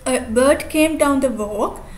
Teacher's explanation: There are three feet. Stress pattern is unstressed stressed. Formula is 2 or 3 syllables equal to 1 feet, and unstressed stress pattern is called iamb. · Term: iambic trimeter